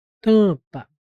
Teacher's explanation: Então, o que tem aqui, ó, duas letras com o som de uma. E o som que prevalece é o an. Então, é um dígrafo vocálico, tem som de vogal.